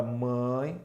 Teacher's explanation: a letra A é a vogal e a letra e observe que tem som de i mãe seria esse I semivocal tá que é uma vogal mais